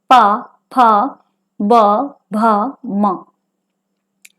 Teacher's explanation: ओष्ठ व्यंजन यानी ऐसे व्यंजन जो कि दोनों होठों के स्पर्श से बोले जाने वाले व्यंजन हैं